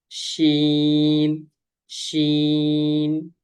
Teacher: জিহ্বার মধ্যখান তার বরাবর উপরের তালুর সঙ্গে লাগিয়ে উচ্চারিত হয় শিন।